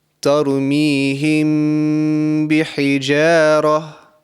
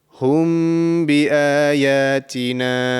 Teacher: So over here, the mim sakin has come, and straight after the mim sakin, there is a ba. So I will produce a nasal sound for 2 seconds and conceal the sound. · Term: Ikhfa mim sakin